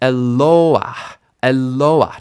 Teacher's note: the stress doesn't end up on that patach gnuva because she cannot take the stress.